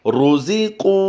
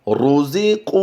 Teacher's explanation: را پر اگر پیش ہو تو بھی را کو پر پڑھا جاتا ہے